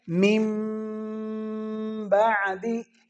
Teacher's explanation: اب اس کے ہجے جو ہیں، ہجے ہم نے کرنے ہیں کہ میم نون میم میم زیر میم، اس میں نون نہیں پڑھیں گے، میم کو میم کے ساتھ ادغام کر دیں گے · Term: اقلاب